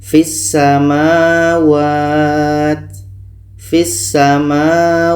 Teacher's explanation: ke sa kita baca fisamawat fisamawat nah ini Idgham Syamsiah karena bunyi lam ini kita tak baca terus masuk ke Sin